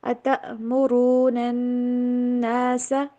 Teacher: کٹ والی ساؤنڈ، ہوا گلے سے نکلنی بند ہونی چاہیے. کیونکہ الف کے ساتھ اگر حمزہ آ جائے، جزم آ جائے، یا پھر زبر زیر پیش آ جائے اس کے اوپر، تو یہ پھر حمزہ بن جاتا ہے.